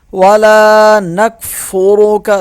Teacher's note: لام ایک الف کے برابر کھینچیں گے اسے لام کو